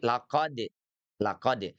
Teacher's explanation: Huruf dal itu ujung lidah kita bertemu dengan gusi atas.